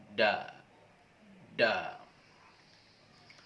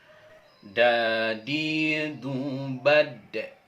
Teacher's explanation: Huruf da dilafalkan dengan menyentuhkan ujung lidah ke gigi seri bagian atas. Agak mirip ketika kita melafalkan huruf ta, yaitu da.